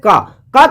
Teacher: ये आवाज जो है डायरेक्ट कंठ से आ रहा है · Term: कंठ व्यंजन